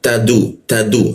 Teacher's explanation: Nah huul masuk kalam mati posisinya di ee ujung lidah diletakkan di bawah ujung humul muh bertemu dengan h mati muh ditengarkan bagian bawah. Tad ta dan dal menggunakan ujung lidah ditempelkan ke gigi dia